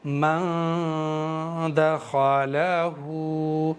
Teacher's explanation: 1 अलिफ के बराबर करा है मैंने गुन्ना, और गुन्ना भी करा है यहाँ पर।